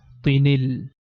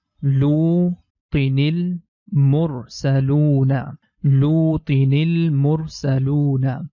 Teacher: Tin becomes tini, and the ni sound is going to connect with lam, becomes tinil. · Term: Noon Qutni